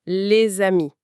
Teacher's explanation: Dans la liaison, on crée un son qui n'existait pas comme le Z de les amis.